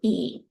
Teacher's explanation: So the body of the tongue is high in front and the root is advanced.